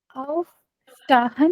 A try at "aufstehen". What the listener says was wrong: शाहन नहीं है, ई को क्या कहते हैं सिमाप, तो फिर ए के साथ प्रोनाउंस करो। ए कहते हैं स्टेहन, ए स्टेहन, स्टेहन। अकॉर्डिंग टू अल्फाबेट्स प्रोनाउंस करो।